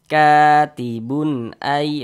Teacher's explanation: Nah, dibaca jelas tak berdengung. Tanwinnya ini dibaca jelas katibun. Kemudian tidak didengungkan, baca pendek saja. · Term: izhar halqi